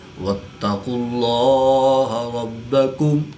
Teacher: اس میں جلالت اللہ عز و جل کے لام سے پہلے قاف پر پیش ہے تو اسلام کو پوری یعنی موٹا پڑھیں گے۔ با مشدد ہے تو با پر قلقلہ کبرا کر کے پڑھیں گے